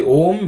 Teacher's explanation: The u rolls over the tongue and m ends on the lips.